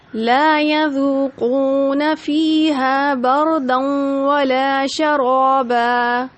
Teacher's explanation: یذوقون، 2 واو مدہ آئے، ایک ایک الف کے برابر کھینچا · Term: مد اصلی